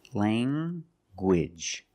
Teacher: You have the nasal sound, lang, and the hard G.